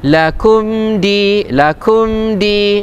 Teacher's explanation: Ada mim mati berjumpa dengan huruf dal. Hukumnya adalah izhar syafawi.